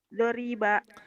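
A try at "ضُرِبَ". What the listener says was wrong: Kok doriba? Kan itu doma non? Nen? Du? Tahu duriba, kenapa di mulutnya doroba gitu kan, kayak gitu biasa, belum sinkron ya, makanya perlu latihan.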